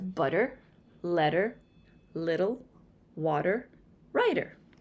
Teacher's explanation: In standard English here in the United States, when the t is surrounded by vowels, we flap our tongue. This causes the t to sound more like a d. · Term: tongue flapping